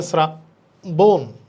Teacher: এখানে লেখা আছে শ্রাবণ হবে না এখানেও শ্রাবণ তালব্য হবে না যেহেতু তালব্যস এর সাথে র ফালা আছে তালব্যসার উচ্চারণ ইংরেজি এস এর মত হবে